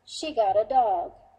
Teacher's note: the intonation went down to indicate the completion of the thought